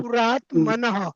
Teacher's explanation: हा शेवटचा जो विसर्ग आहे तो मात्र नेहमी तो सारखा पूर्ण घ्यायचा. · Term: विलंबित विसर्ग